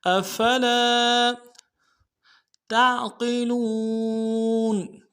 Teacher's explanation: افلا تعقلون، افلا، افلا، حمزہ کو نرم سے ادا کرنا ہے، فا کو نرم سے ادا کریں گے، لام کے ساتھ الف مدہ ہے ایک الف میں کھینچیں گے